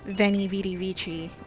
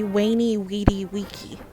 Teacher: these are pronounced the same as w's in classical latin